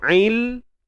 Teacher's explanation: Lam ni dia ada tawassut tuan-puan. Maka bunyinya berpanjangan sikit. Ail. Kemudian pergi pada step yang kedua.